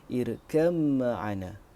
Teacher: membaca dengan idgham huruf ba kepada mim apabila wasal